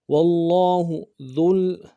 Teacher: لفظ اللہ کے اوپر تشدید بھی ہے، کھڑا زبر بھی ہے، زور بھی دیں گے اور کھینچیں گے بھی